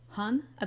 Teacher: Hanu has a long n sound in the middle, so it might help you to picture it as two separate words.